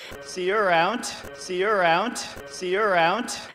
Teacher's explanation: a lingering kind of flat slightly upward intonation